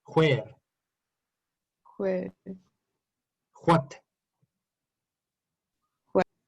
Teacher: The sound wa sounds hua in Scottish.